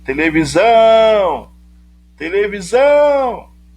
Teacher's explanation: Quando eu chamo televisão, o zão fica mais intenso para mim. Eu me demoro mais ao pronunciar a sílaba zão. Televisão! Porque ela é a sílaba tônica, a sílaba de maior intensidade.